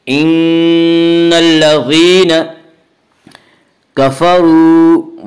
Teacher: ان الذین کفروا، واو مدہ ہے، واو مدہ اس واو کہتے ہیں جو واو ساکن اس سے پہلے پیش ہو، اور واو مدہ کو ایک الف کے برابر کھینچ کر پڑھیں گے